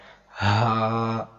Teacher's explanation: نیچے والے حصے سے ادا ہوتا ہے، جیسے کہ ہمارے سینے سے ڈائریکٹ آواز باہر آئے